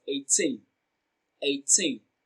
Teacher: tin receives the stress it is pronounced louder and longer